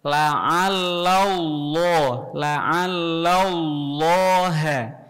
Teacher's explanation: Lafzul jalalah, lafaz Allah dibaca tebal. · Tebalnya dari lidah, bukan dari bibir.